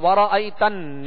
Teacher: نون پر تشدید ہے تو نون میں غنہ کریں گے